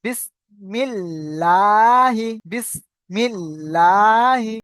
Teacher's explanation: আল্লাহ শব্দের মুশাদ্দাদের পূর্বে জের এসছে তা আল্লাহ লাম বারিক পড়তে হবে